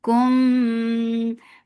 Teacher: For dhamma circle lips, as you will touch ikhfa. This is ikhfa shafi.